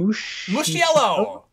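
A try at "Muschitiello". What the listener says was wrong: Okay, well, there's an extra syllable in there. Mushitiello?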